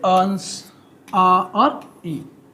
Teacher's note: अनुनासिक स्वर की बात करें तो हवा जो है मुंह से भी निकलेगा और नाक, मतलब एक साथ मुंह और नाक दोनों से निकलता है, उसको बोलते हैं अनुनासिक।